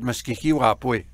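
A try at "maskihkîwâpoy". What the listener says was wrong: It's wapos, not wapoy.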